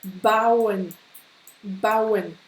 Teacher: Donc c'est AU, mais qui se prononce AO. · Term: diphtongue